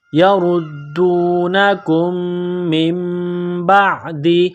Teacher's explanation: یردونکم، میم مشدد ہے، غنہ کریں گے۔ نون ساکن کے بعد با ہے تو یہاں پر غنہ کریں گے، آواز ناک میں چھپائیں گے، اس ناک میں آواز چھپانے کو اقلاب کہتے ہیں۔ یردونکم من بعد، با کو عین کے ساتھ پلس کرنا ہے، عین جو گلے سے نکلتی ہے زور لگا کر عین کو نکالا جاتا ہے۔